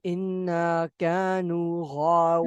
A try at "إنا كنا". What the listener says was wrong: No, there is Kanu. كنا